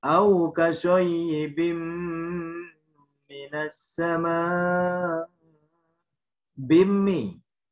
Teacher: tanwin bertemu mim, melebur harokat tanwin kepada huruf berikutnya yaitu mim disertai dengungan sekurang-kurangnya dua harokat. Hukumnya idgham bi gunnah.